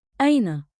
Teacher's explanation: One beat, like, in, with a light catch at the start.